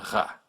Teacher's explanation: And the French R, R, as in ra, way back in the throat where you gargle